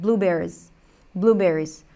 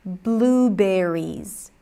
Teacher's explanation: the sound in the word berries is a high e now because it's a long word we tend to reduce it